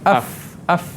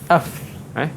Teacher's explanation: Gigi kacip bertemu dengan bibir bawah